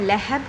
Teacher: کھینچیے گا، لہب، یہاں پر بھی قلقلہ کبریٰ ہو رہا ہے، با ساکن کر دیں گے تو قلقلہ کبریٰ ہو رہا ہے